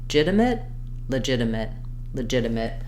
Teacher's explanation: sounds more like a d it's basically a flap sound so it's not a strong D · we're just quickly starting on the L with a reduced vowel and then right to the J sound